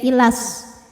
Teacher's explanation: jika terus madnya gugur, lamnya dibaca pendek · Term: takhallus bil hadfi